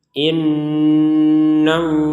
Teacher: Nun bertasdid harus kita dengungkan 100% jadi di rongga hidung kita harus berdengung 100% inall ini panjangnya dua harakat kalau kita berhenti dan tidak memanjangkan